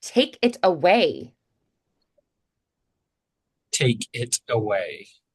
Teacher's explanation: away has a little glottal strike to make that start of away. the word clear.